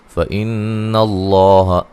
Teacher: لفظ اللہ کو موٹا ادا کریں گے، اس سے پہلے حرف پر زبر ہے اور یہاں نون مشدد پہ غنہ ضروری ہے۔